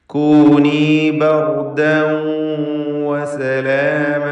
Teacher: കൂനി ബർദൻ വസലാമ, ദാലിൻ്റെ തൻവീൻ ബർദൻ, ശേഷം വാവ് ഇദ്ഗാം ബിഗുന്ന നാഖസ് നൽകി വാവിലേക്ക് തൻവീനെ ലയിപ്പിച്ച് മണിക്കുക.